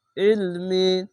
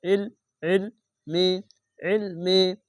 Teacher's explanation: ইলমি আইনটিকে মোটা করে গলা চিপে পড়বেন